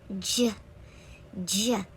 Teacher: To pronounce the J sound of G, you are going to keep your tongue again about at the back middle top area of your mouth, and then you are going to push your lips out, J, J, as you use your voice, and feel a puff of air in your mouth over your tongue when you say J, J.